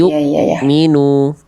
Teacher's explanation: dalam keadaan sukun Hamzah itu enggak boleh dibaca panjang atau bersisa bunyinya harus betul-betul putus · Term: hamzah sukun